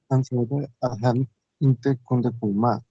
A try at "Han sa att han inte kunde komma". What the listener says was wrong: No te necesitas decir sabe. Como yo lo expliqué antes, puedes decir han sa. Le quita el D. Han sa att.